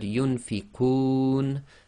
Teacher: the noon is read as sakin when we stop. So the long vowel could be 2, 4 or 6 long.